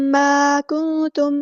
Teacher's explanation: الف مد آ گیا تو مد اصلی کریں گے، یہ الف باریک پڑھیں گے. کنتم، نون ساکن کے بعد کو ہم یہاں چھپا دیں گے، اخفا ہوگا.